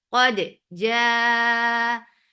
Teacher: Open your jaws for fatha and make it 4 counts long. · Qaf is heavy. For fatha open jaws, attach with dal. Keep dal light.